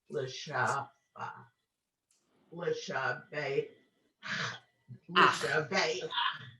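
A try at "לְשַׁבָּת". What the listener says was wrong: Ah, exactly. Perfect.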